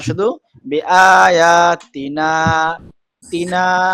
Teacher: তি টানটা হবে না, শুধু বিআয়াতিনা তিনা